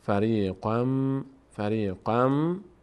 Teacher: خم ممم چون تشدید داره به مانند نون تشدید دار اینجا چون میم تشدید پیدا کرده غنه میشه